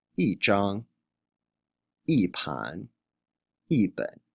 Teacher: Before a first, second, or third tone, it's pronounced in the fourth tone. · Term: tone sandy